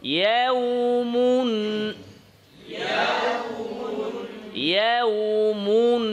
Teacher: ওয়াওয়ে ঠোঁটটা সুন্দর করেন, গোল করতে হবে, নরম শক্ত না।